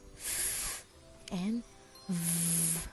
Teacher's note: Labiodental is where the lower lip and the upper teeth come together.